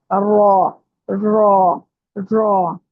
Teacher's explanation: रॉ जुबान की नोक की जो बैक साइड है ना, पुष्ट, जो पुष्ट होता है बैक साइड वाला हिस्सा, जुबान की नोक और उसका नीचे वाला हिस्सा जो है वो सामने वाले 4 दांतों के मसूड़ों से लगाकर अदा होगा